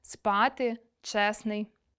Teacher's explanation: у кінці слова ненаголошені е та и вимовляємо з наближенням